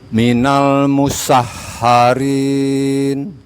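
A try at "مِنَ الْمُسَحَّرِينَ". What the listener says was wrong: Ayo. Sudah Pak. Barakallahu fiik.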